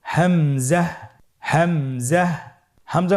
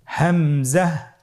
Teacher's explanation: হামজা হরফটি উচ্চারণের ক্ষেত্রে বারিক করে উচ্চারণ করতে হবে এবং এখানে টেনে পড়া যাবে না। দ্রুত পড়তে হবে।